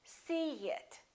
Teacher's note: In this case, we put a little Y, a little Y sound.